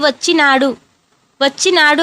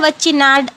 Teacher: వచ్చినాడులో డూని సరిగ్గా పలకకుండా ఆ డూని సగమే పలుకుతారు